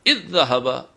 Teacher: اذ ذهب، یہ جزم تھا، دو الگ حروف تھے، لیکن ان پہ تشدید دے دی گئی ہے کہ یہاں ادغام ہو گیا ہے، یہ دو حروف ایک ہو گئے ہیں، اب ان کو شدت سے پڑھیے